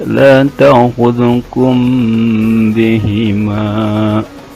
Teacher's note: Disebut ifa safawi karena mim sukun bertemu dengan huruf ba yang dibacanya didengungkan ditahan syukuran 2 harokat, tapi dengungnya samar